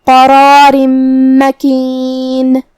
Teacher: پھر حرف المیم ہے کلمت مکین میں، تو یہاں حکم ہوا ادغام بغنہ. ہم یہ تنوین کو میم میں ملا کے غنہ اور تشدید کے ساتھ یہ حکم کو ادا کریں گے. قرار مکین، کلمت مکین کے آخری میں نون کے نیچے تنوین زیر ہے.